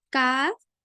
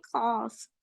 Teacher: काफ को आपको मुरक्कक पढ़ना है और खौफ को मुखफ़्फ़म, मतलब कि पुर पढ़ना है, मोटा करके, क्योंकि ये हरूफे मुस्तालिया में से आपका आता है।